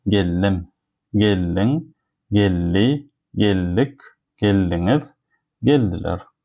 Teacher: If we have l and d together in the word, we read it as a two l. So that's why I do not say geldim.